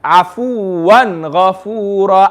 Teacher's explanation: Not Afuwan. No gunna, no nasal sound.